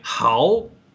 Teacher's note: the sentence tone is taking over the syllable tone